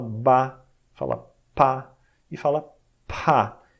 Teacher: Por fim, tem aquelas que tu bloqueia o ar encostando os lábios um no outro. Você encosta lábio em lábio, então você tem as consoantes labiais.